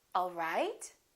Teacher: now if this is a question I would say it differently the word right the pitch would go up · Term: rising intonation